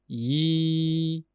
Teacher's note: ya talaffuz qilinayotganda tilning oʻrta qismi yuqoriga ko'tariladi. I tovushini yoki mad harfi bo'lgan ya ni talaffuz qilayotganda tilning oʻrta qismi yuqoriga ko'tarilishi kerak.